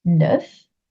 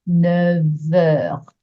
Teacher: I did want to explain that even though you might know that the number 9 is pronounced neuf, neuf, N-E-U-F, neuf, when that word is followed by something that starts with a vowel or the letter H, like heure, it's actually going to soften the F into a V sound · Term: liaison